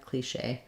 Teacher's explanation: stressed on the second syllable